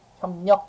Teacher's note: 기역 비읍 뒤에 리을이 오게 되면 일단 이 리을이 비음 니은으로 바뀌어서 발음이 되고요. 이 니은 때문에 기역 비읍이 각각 이음과 미음으로 비음화가 되는 겁니다.